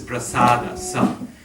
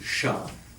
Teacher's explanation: The Sanskrit is prasada, sa, but in Bengali it becomes sha